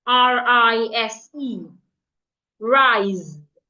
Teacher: The S in that word sounds like a Z.